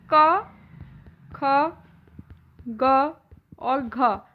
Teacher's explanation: क ख ग और घ ये चारों ही कंठ से बोले जाते हैं